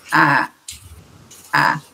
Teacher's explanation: se a vogal ela é glotalizada, ela tem esse fechamento da glote após a vogal, então, alguma coisa assim, você pode acabar não fechando bem e laringalizando, então você pode dizer a.